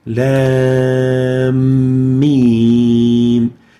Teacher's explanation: So this mim at the end of the lam is to be merged in the beginning mim of the beginning of the mim. So the end of the first letter with a vowel, the lam, is pronounced merged into the beginning of the following mim letter